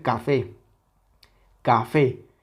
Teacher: puede ser café café Okay esta tiene dos sílabas ca fé Cuál es la silaba tónica evidentemente la última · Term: sílaba tónica